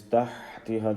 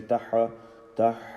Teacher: the ha sound, you make it continue. Don't say taha, tah.